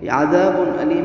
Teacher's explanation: عذاب علیم میں یہاں پر اظہار ہے، یہ اس لیے کہ تنوین ہے اور تنوین کے بعد حروف حلقی میں سے حمزہ ہے تو یہاں پر اظہار ہوگا. اظہار مطلب غنہ کے بغیر پڑھیں گے